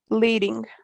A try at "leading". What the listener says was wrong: Leading. Good, very good.